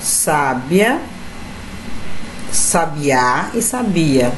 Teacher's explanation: nota-se que a mudança de posição da sílaba tônica das palavras também apresenta um caráter distintivo. Então observe aqui, gente, a mesma palavra, porém com sílabas tônicas em determinado lugar. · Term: tonicidade